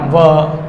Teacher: तो होठ भी शामिल होते हैं और दांत भी टच होते हैं।